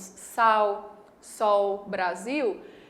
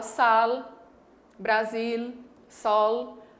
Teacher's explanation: existem regiões como o sul do Brasil, por exemplo, em que o L não é pronunciado como U, e sim como L